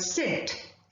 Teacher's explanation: the vocal cords are drawn far away from each other and the air passes through the wide open glottis without affecting the vocal cords such sounds are called voiceless sounds students i repeat when the